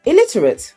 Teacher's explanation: you are placing the stress on the first syllable the stress is actually on the second syllable plus the last